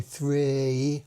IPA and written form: θrɪj (three)